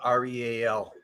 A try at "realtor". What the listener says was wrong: Realtor. But you put an A in there. Realtor. It's not realtor. It's realtor. Look at the words.